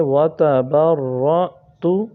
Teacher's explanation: الف اور حمزہ کے اوپر جب جزم آ جائے تو اس میں ہمیشہ ہم نے جھٹکا دینا ہے